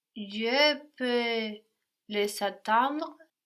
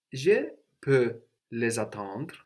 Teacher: the reappearing of the S, which sounds like a Z here between vowels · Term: liaison